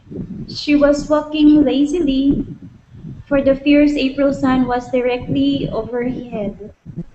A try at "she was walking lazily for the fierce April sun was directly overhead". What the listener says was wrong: nice okay